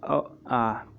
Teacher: अ आ जो है कंठ से बोले जाते हैं